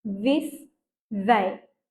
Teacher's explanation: you make it buz right where your tongue touches your teeth